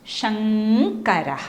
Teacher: ഈ ഇം എന്നുള്ള അനുസ്വാരത്തിന് മാറ്റം വരുന്നു അത് ക വർഗ്ഗത്തിലെ അവസാനത്തെ അനുനാസികം ക ഖ ഗ ഖ ങ്ങ അ ങ് ആയി അത് മാറുന്നു അപ്പൊ